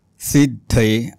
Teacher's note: द ला ध लागलाय द अर्धा आहे आणि ध पूर्ण आहे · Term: जोडाक्षर